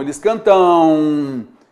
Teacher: há um decréscimo do som. Vogal an e semivogal U